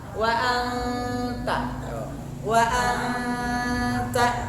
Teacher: Wa anta ikhfa, nah itu jangan terburu-buru, dipanjangkan. Wa anta, posisinya posisi lidah dalam lapal ta.